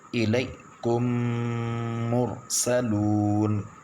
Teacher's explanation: یہ غنہ ہوگا، میم ساکن کے بعد میم ہے